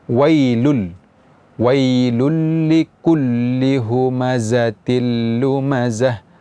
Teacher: tanwin bertemu dengan huruf lam maka bunyi Nun pada tanwin itu tidak di baca lagi langsung masuk ke huruf lam tanpa ada dengung atau gunnah